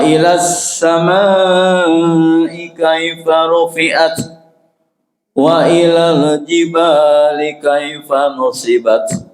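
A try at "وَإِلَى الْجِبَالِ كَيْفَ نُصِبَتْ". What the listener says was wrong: Awas hati-hati matnya jangan panjangan untuk mat tobinya. Wa ilal jibali.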